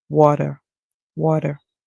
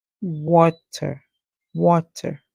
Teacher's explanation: the American would pronounce the T as a D sound · however if you're using British pronunciation be careful to remember that British would pronounce the T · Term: American pronunciation